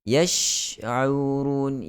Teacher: sifat tafashi yang ada pada huruf shin lebih jelas kita dengar, terutamanya ketika huruf shin itu bertanda mati